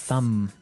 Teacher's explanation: No, I actually only pronounce the M